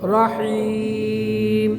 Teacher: র মোটা হবে আর হিম গলায় চাপ হবে